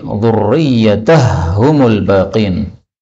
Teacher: ha ketemu ha, ini boleh idgham menjadi dzurriyyatahumul baqin